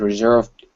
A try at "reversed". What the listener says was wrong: Now, here you mixed up the V and the S. You said reserved. Yeah, reversed.